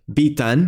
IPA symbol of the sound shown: i: